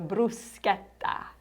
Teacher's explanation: you pronounce the CH like a K, not like a cha